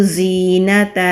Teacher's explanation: وَلَا تَعْدُ عَيْنَاكَ عَنْهُمْ تُرِيدُ زِينَةَ الْحَيَاةِ الدُّنْيَا، یا سے پہلے زیر یا مدہ ہے، زا بزنگ ساؤنڈ کے ساتھ ادا ہوگا، دانتوں کو آپس میں ملائیں گے اور زبان کو نیچے والے مسوڑہ پر مضبوطی کے ساتھ ٹچ کریں گے تو یہ والی آواز بزنگ ساؤنڈ کے ساتھ ادا ہوگی۔